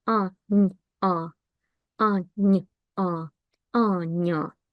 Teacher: ya is not pronounced like ya. It's pronounced more like a after a soft n.